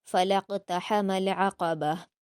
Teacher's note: last میں گول تا کو وقف کرتے ہوئے ہا ساکن میں بدلیں گے